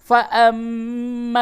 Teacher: ناک میں آواز لے جا کر کے گنگناتے ہیں